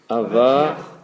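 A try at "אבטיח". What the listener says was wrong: Avatiach. C'est ça justement que le chet final, la logique, théoriquement, tu as bien prononcé Avaticha. Mais comme la lettre chet est à la fin du mot, il faut remettre la voyelle avant la lettre. Et donc c'est Avatiach. Avatiach. Avatiach.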